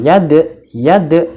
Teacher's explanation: qalqalah maka harus dipantulkan